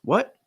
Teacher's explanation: you can raise the pitch shorten it a little bit